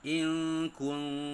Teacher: bunyi Nun dibaca secara samar-samar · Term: ikhfa Haqiqi